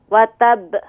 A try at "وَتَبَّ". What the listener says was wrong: آپ اس میں با پر ہونٹوں کو ذرا سخت کر دیں، وتب، جی وتب،